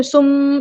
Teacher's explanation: سمم غنہ میم پہ شد ہے تو ہم غنہ کریں گے